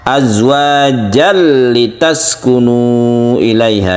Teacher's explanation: Yang ada adalah tanwin bertemu dengan lam yang kita sebut idgham bila guna.